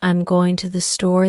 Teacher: the emphasis falls on going and store not I'm or to